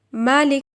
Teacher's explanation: متحرک، اسے عدم غنہ کے ساتھ پڑھا جائے گا